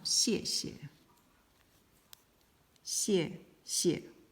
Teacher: Both are in the fourth tone, the down tone.